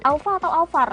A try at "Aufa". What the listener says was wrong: Aufa, nggak pakai R.